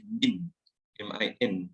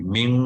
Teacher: Okey, yang first tadi kita tengok, saya ulang balik hukum yang pertama tadi adalah nun bertemu dengan shin, iaitu ikhfa hakiki. Jadi bunyi dia tak boleh min, min, tapi kena ming, min dua harakat dengung.